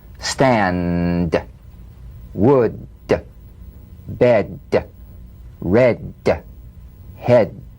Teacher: Voiced tonguefront palatal stop consonant. Play this D drum beat on the springing away of the tongue from the upper gum ridge. Feel a pulsation in the tongue.